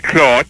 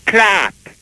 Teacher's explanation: So a word like C-L-O-T-H, clot, becomes clat, because we flatten vowels